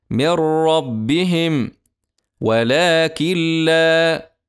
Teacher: نفس اما الادغام الكامل بغير غنه يكون ما حرفي الراء واللام وندغم النون الساكنه او نون التنوين الساكنه ادغاما كاملا بغير غنه في حرفي الراء واللام